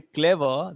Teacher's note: when you say clever, the stress is on the first part.